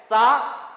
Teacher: सा दंतमूल दांतों के जड़ों से बोला जा रहा है